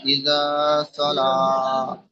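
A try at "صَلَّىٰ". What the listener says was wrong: সাল্লা তাসদিদ আছে না ভাই? টান দেওয়া নিষেধ।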